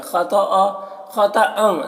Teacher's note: خا طا دونوں کو پر پڑھنا ہے اور ان کی تنوین میں اخفا ہو رہا ہے.